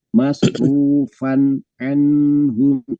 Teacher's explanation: karena tanwin ketemunya dengan ain, ain itu termasuk huruf halki, huruf tenggorokan, maka dibaca idhar, itu namanya ya, idhar, dibaca jelas.